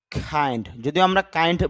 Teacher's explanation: খ সাউন্ডটা যদি শব্দের শুরুতে আসে তখন বাতাস বের হয়, তখন ক থেকে খ হয়ে যায়